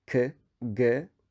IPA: k g